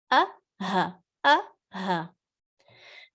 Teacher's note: گلے کا سب سے نیچے والا حصہ جہاں سے حمزہ اور ہا پروناؤنس ہوگا